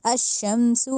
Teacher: सीन में सीटी की आवाज़ लाजमी आए, सा के साउंड नहीं, अशमसु नहीं कहना।